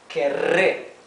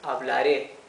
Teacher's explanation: So here we can see that this double R is pronounced R. Okay, it is the rough sound of the R. It's not the soft, the smooth sound R